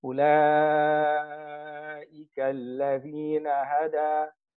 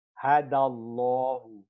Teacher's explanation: It's alif maqsura. When you join, the alif maqsura drops.